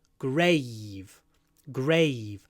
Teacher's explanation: here we have a V at the end it's voiced